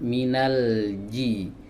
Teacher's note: hati-hati huruf Jim ini tidak memiliki sifat hams · huruf Jim ini keluarnya dari bagian tengah lidah